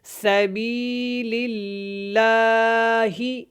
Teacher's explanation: یہاں پہ اللہ والا لام ہے لیکن اس سے پہلے زیر ہے، تو اس کو ہم نے کیا کرنا ہے؟ باریک پڑھنا ہے، موٹا نہیں پڑھنا، اور لام کو جب ادا کرنا ہے تو کھڑی زبر کی وجہ سے اس کو آپ نے لمبا کرنا ہے۔